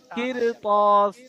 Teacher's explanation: এখানে আলিফ মাদ্দা হয়ে টান হয়ে যাবে